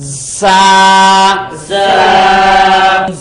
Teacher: জিহ্বার আগা সামনের নিচের 2 দাঁতের আগার সঙ্গে লাগাইয়া একটু সিসি পাখির মতো সিসি আওয়াজ দিয়ে বলুন